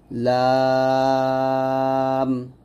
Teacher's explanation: তারপর লাম, এগুলো সহজ হরফ, জিহ্বার আগার কিনারা উপরের দাঁতের সাথে লাগবে